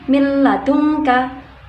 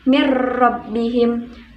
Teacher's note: Idgham bila gunnah adalah hukum bacaan yang melebur tanpa disertai dengan mendengung, atau yang berarti memasukkan salah satu huruf nun sukun atau tanwin dengan huruf setelahnya tanpa disertai dengan mendengung.